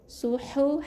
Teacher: Bukan suhu badan tu su tebal, hu kena pedaskan. Ni ha yang huruf H. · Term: ha pedas